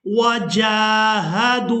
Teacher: यहाँ जीम को खड़ी ज़बर की वजह से खींचकर अदा करेंगे